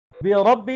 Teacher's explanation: بربی میں را موٹا ہوگا